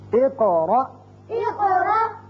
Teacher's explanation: اب دیکھیے قاف، دونوں قاف جگہ پر قلقلے ہیں، دونوں جگہ ہم نے قاف کی 2 آوازیں نکالی